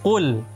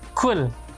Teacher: Qafnya memiliki sifat jahar, yakni tertahannya nafas.